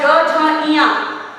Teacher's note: सघोष व्यंजन जिनके उच्चारण में स्वर तंत्रियों में कंपन होता है